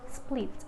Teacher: T is voiceless alveolar stop